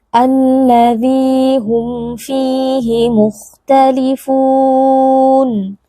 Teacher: Mad thi'i yang dibaca panjang dua harakat yaitu Ya Sukun yang sebelumnya berharakat kasrah